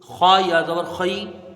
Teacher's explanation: خا یا زبر خی، یہاں پر یا لین ہوگی، یا ساکن سے پہلے زبر ہے، یا لین ہوگی